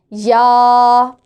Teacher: وسط زبان اور بالمقابل تالو سے یہ حرف ادا ہوگا، وسط زبان بالمقابل تالو سے، یا۔